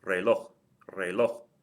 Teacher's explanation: The stress is on the last syllable. It ends in something other than a vowel N or S.